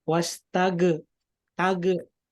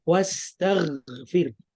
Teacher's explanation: Nah, kalau tage itu dia qalqalah, padahal huruf gho itu bukan qalqalah. Jadi dia tidak boleh memantul.